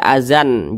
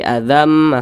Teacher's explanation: bunyi tanwin ini masuk ke huruf mim dibaca Azam Jangan dibaca azan jangan tapi Azam kemudian didengungkan Azam Mir Rasih kemudian di sini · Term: idghamunah